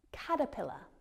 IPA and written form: ˈkætəˌpɪlə (caterpillar)